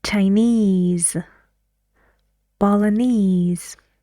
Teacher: All the words have the stress on ease.